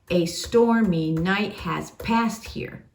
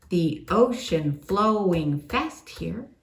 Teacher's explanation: that is called a feminine ending where you end on a downbeat instead of an upbeat